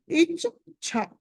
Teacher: Okay, ఇక్కడ ఇచ్ఛాలో చ కింద ఛ అవుతుంది. మొదటి చ మామూలు అల్ప ప్రాణము, దాని కింద ఛ ఉన్నది మహాప్రాణం.